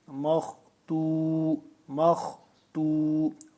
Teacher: خا کو موٹا پڑھیں گے، مخ تو۔ میم دو زیر من، مخ تو من، مختوم، اگر وقف کریں گے تو کیا ہو جائے گا؟